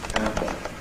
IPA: ˈæmbə